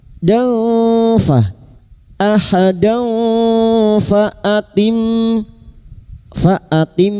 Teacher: Fathah tanwin pada huruf dal bertemu fa hakiki. Kita samarkan bunyi fathah tanwin dan mendengung selama tiga harakat.